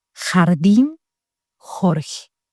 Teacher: La lettre J, c'est un son guttural proche du R français fort.